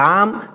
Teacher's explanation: জিহ্বার আগার কিনারা। জিহ্বার আগার যে কিনারা রয়েছে এই কিনারা থেকে সামনের উপরের মাড়ির গোড়ার সঙ্গে লাগাইয়া লাম।